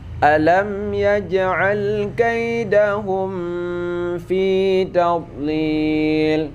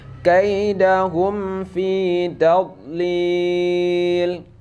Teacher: Mim mati bertemu dengan fa, idhar syafawi juga. Jadi tidak berdengung ya.